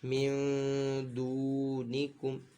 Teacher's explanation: پیش کم، من دونکم، یہاں پہ بھی اقفا کا قاعدہ ہے، نون ساکن کے بعد حروف اقفا میں سے دال ہے، تو یہاں پہ بھی نون ساکن میں غنہ کریں گے